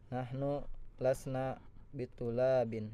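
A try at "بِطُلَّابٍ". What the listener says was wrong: bitullabin. Iya, lamnya panjang ya. Nahnu lasna bitullabin.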